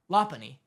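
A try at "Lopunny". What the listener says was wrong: why where'd you get the a it's just a like a like a soft U or a no it's oh it's l-o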